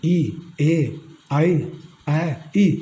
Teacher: इसमें अपने जीभ का आगे का अग्र भाग होता है, वो सक्रिय होता है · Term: अग्र स्वर